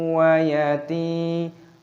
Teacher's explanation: A fathah tanwin meeting a waw, the rule is idgham bighunnah, inserted and accompanied by a hum.